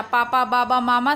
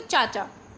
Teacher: पापा, बाबा, मामा सभी ओष्ठ्य ध्वनियाँ हैं, लेकिन चाचा जैसी बोलते हैं तो तालव्य, तालु से आवाज़ निकलती है